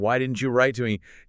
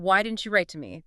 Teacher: Say that with a falling tone at the end.